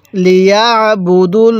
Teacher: আল্লাহ শব্দের এই লামের পূর্বে যদি জবর অথবা এরকম পেশ থাকে তাহলে সেটাকে আমরা ল করে পড়বো অর্থাৎ মোটা করে পড়বো